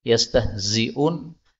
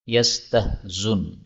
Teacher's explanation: hamzah dihilangkan boleh, tapi zainnya di dhammah